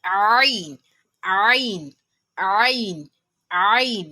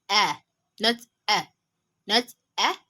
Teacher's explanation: It is pronounced from the throat. That is, its point of articulation is al-halq. So we have ain.